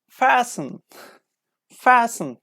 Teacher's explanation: So these kind of words contain T, but it's not pronounced.